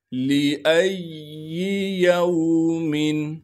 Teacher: وَإِذَا الرُّسُلُ أُقِّتَتْ لِأَيِّ يَوْمٍ، لام کو بغیر کھینچے پڑھیں گے، لام کے بعد حمزہ ہے، حمزہ کو بغیر جھٹکے کے پڑھنا ہے اور حمزہ کو آگے یا سے ملائیں گے اس لیے کہ یا پر تشدید ہے۔